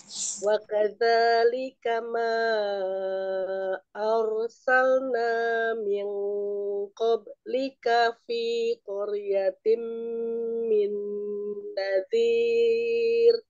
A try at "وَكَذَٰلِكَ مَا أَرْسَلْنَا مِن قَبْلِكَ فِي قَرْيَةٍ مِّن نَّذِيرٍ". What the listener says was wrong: Ya, afan Umi, yang qablika kurang mantul ya, kol-kolahnya. Jangan ditahan, ya.